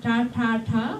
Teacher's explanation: So Indian English, which has borrowed some of what are called retroflex sounds. So if you put your tongue back when you make ta ta ta, when you make that sound, that's a retroflex T